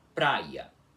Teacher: o i semivogal que chamamos de I breve, que é aquele i cortado que aparece em relação entre vogais